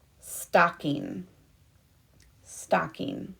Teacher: i hear the ah sound in stocking which means it has to be the short o